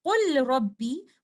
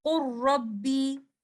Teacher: the verb qul is followed by letter ra. We will do idgham kamil here